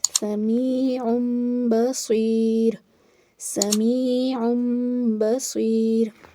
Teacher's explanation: تو یہاں پر بھی ہم اقلاب کا قاعدہ اپلائی کریں گے، تنوین کو میم سے بدل کر پڑھیں گے اور ساتھ میں غنہ بھی کریں گے